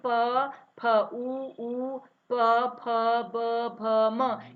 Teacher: ये सारे क्या कर रहे हैं, हमारी जो ध्वनि निकल रही है वो होठों के माध्यम से निकल रही है। जो वायु निकल रही है वो होठों को छूती हुई निकल रही है, इसलिए इसे ओष्ठ्य वर्ण कहते हैं। · उच्चारण करते समय हम होठों को, दोनों होठों को आपस में मिलाते हैं।